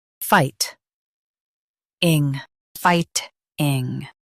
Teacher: Emphasize fight and keep ing soft.